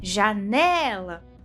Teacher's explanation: a sílaba né é tônica, pois é pronunciada de modo mais enfático que as demais. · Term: sílaba tônica